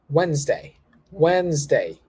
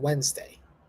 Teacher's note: You cut the letter D there. You don't pronounce the D.